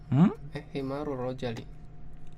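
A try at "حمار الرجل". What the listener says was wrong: Ar-rajulu. Himarur iya, ar-rajulu ya, laki-laki, ar-rajulu ya, bukan rojali, bukan ya, rajulu ya, sehingga ketika ditambahkan himar jadi himarur rajuli ya, artinya apa? Rajul ya, rajul. Bukan rojali, rajul. Ingat, ar-rajulu bukan ar-rajali ya. Ar-rajulu.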